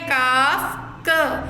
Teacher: کاف قاف کی جگہ سے ذرا ہٹ کر نیچے کے منہ کی جانب سے ادا ہوتا ہے